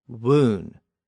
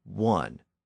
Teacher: the sound was raised to a long U or oo sound, woon, and then was shortened to a short U sound, ultimately giving us the modern pronunciation one.